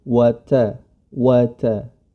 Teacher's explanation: ta tetap ta diistifalkan atau tidak ditebalkan ya tipis saja